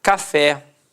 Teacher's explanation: repare que a sílaba tônica é a última e é terminada em e